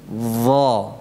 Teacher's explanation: ujung lidahnya menempel pada ujung gigi seri atas. Jadi keluarkan agar ketemu itu antara ujung dengan ujung lidah dengan ujung gigi seri atas. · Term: huruf lithawiyah